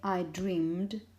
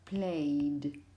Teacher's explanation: When the last sound you make in the infinitive vibrates like a mobile phone, you have things like dream. In the past, you would say, I dreamed. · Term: d sound